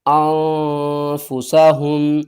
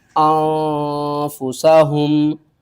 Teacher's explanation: نون ساکن کے بعد حروف اخفا میں سے فا ہے تو ہم اسے کیا کریں گے، آواز کو چھپا کر پڑھیں گے